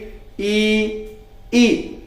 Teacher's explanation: बोल के देखें आप, जीभ ऊपर को उठेगी। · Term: तालु